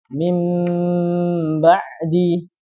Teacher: ba atau tanwin bertemu dengan ba maka hukumnya adalah ikqlab ya cara bacanya ini diganti Nun sukunya atau tanunya menjadi huruf mim dengan gunah yang dipanjangkan